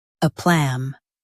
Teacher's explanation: Stress plum and keep a light.